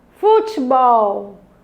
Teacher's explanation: Qual é a sílaba tônica? Bol. Se essa é a sílaba tônica, ela é uma palavra oxítona.